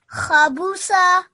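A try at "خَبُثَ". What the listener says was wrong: Just with the last letter, it's actually pronounced a little more softly. Otherwise, if you say sa, you can confuse it with this letter that I've just highlighted here, this scene.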